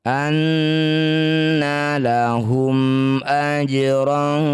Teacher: anna nun bertasydid disebut bacaan gunah musyaddadah bunyi nun dengungkan dua harakat